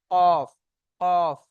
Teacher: আগে আপনি কফটি বলবেন, আগে আপনি কফটি বলবেন, কফ বলার সাথে সাথে আপনার যদি সহি উচ্চারণ হয় আপনার কিন্তু জিভটা অটোমেটিক ওখানে লেগেই যাবে। জিভের গড়া জিভের গড়া তার উপরে তালুর সাথে লাগিয়ে কফ উচ্চারণ হয়